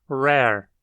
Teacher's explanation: a letra R na maioria dos dialetos é pronunciada como uma aproximante alveolar que pode ser labializada ou não dependendo da posição na palavra